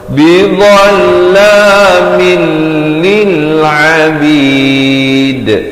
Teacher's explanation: asalnya min jadi terus masuk tanpa dengung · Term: idgham bila ghunnah